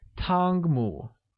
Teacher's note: Tangmu is said with a high level tone on A and a mid rising tone on U.